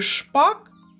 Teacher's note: коли ми промовляємо звук ш наш язик утворює чашечку Так кінчик його за верхніми зубами але не торкається альвеол зуби зробили парканчиком Ось так Подивіться парканчик губи бубликом так бічні